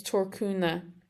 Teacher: I speak Connacht Irish, and they don't pronounce the end of cúnamh